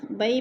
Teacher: یا ساکن سے پہلے با کے اوپر زبر ہے تو یا لین کو لمبا بھی نہیں کرنا اور جھٹکا بھی نہیں دینا